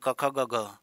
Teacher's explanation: अघोष किनको कहते हैं जिनमें कंपन नहीं होती है तो क और ख में कंपन नहीं है बाकी ग ग घ ग में कंपन है अंगा में नहीं